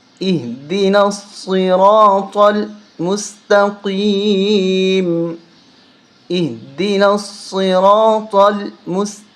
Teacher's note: را کو موٹا کرنا ہے، صاد کو موٹا کرنا ہے، طا کو موٹا کرنا ہے